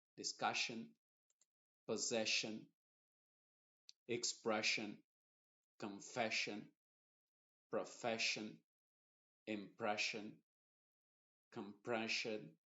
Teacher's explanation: la doble s con la i están funcionando como una sh